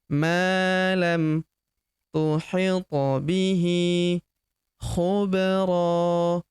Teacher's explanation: Huruf ba berharakat sukun kita pantulkan atau kita qalqalahkan